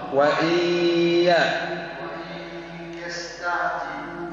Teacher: النون في الياء ادغام